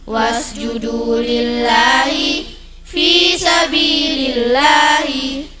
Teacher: Lafaz Allah didahului kasrah tipis bacanya. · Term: lam jalalah tqiq, lam jalalah tarqiq